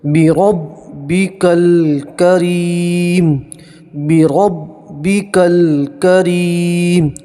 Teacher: را کے اوپر زبر ہے تو را کو موٹا پڑھیں گے، پور پڑھیں گے